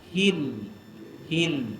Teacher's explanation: lidah itu dia melengkung menyentuh pada makhraj dia iaitu bahagian atas bahagian langit atas